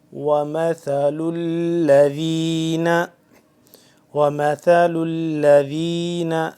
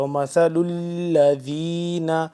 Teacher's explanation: ومثل الذین، ومثل الذین، ثا کو نرمی سے پڑھنا ہے، اور لام کے ساتھ مل رہا ہے، آگے لام تشدید ہے اس پہ، یعنی کہ لام مشدد ہو گیا تو اس پہ تھوڑا سا کھچاؤ پیدا ہو رہا ہے